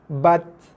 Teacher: Dia tekan dulu pada makhraj, iaitu hujung lidah tekan belakang gigi, baru keluar sikit hembusan nafas. Bat. Okay, jelas bunyi Bukannya bat tak keluar nafas langsung, salah.